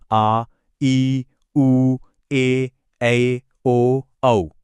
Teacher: इनको बोलने में लघु स्वरों से ठीक डबल टाइम यानी दो मात्रा का समय लगता है। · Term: दीर्घ स्वर